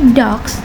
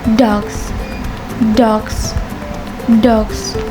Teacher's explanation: when you say dogs the s sound like Z because the G is a voice sounds